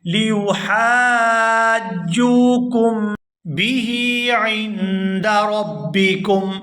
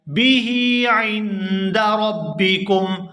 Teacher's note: یہاں ہا کے نیچے کھڑی زیر ہے تو اس کو کھینچ کر ادا کیا جائے گا